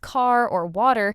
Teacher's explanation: The pacing tends to be a bit more measured than American English, and it's non-rodic, meaning the R at the end of words like car or water just isn't pronounced · it's non-rhotic, meaning the R at the end of words like car or water just isn't pronounced. Which some learners find easier, honestly, because it removes a sound they were struggling with anyway.